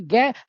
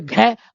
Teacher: तो घ में ज्यादा हवा निकली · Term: महाप्राण